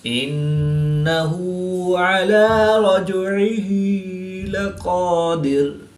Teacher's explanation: نون مشدد میں ہمیشہ غنہ ہوتا ہے تو یہاں پر غنہ آنی کر کے پڑھیں گے